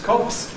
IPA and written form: kɒps (cops)